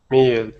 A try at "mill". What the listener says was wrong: I'm still hearing E. The only way to do this, is to say the sound and then say the word. So, mill. Mill.